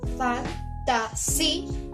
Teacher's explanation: Su acento, la fuerza de voz se ubica en la I de la segunda sílaba. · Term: hiato